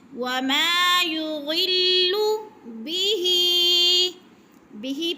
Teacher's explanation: وما یضل بہ پہ مد ہو رہی ہے کھینچ کے 5 حرکات کے برابر